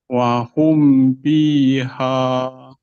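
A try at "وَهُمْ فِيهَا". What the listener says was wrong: Oke, di fi Pak rasakan fa lagi. Pak rasakan huruf fa itu keluar dari bibir bawah bertemu dengan gigi seri atas. Fi, fi, fi. Nah, ada hamas yang keluar atau ada nafas yang keluar. Wahum fiha. Nah, rasakan Pak hamasnya keluar. F, f, f.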